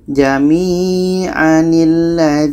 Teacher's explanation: tanwin ini kita buang barisnya satu kita ganti dengan Nun yang berbaris di bawah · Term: nun wikayah